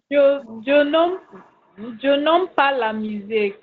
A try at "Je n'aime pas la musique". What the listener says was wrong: How do you call it aim? This is not English class now. Aim, AIM is aim in English. English and French, they might be spelled the same way, but they can never be pronounced the same way. No matter, they will always be different.